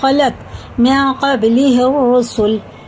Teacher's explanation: ایک الف کے برابر ناک میں چھپا کر پڑھنا غنہ کر کے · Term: اخفا